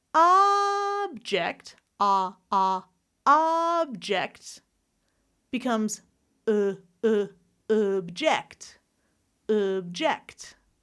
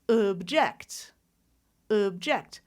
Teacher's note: When I change the stress to that second syllable, I'm going to reduce the vowel to object, object. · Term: schwa